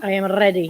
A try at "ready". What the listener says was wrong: You gotta roll that R.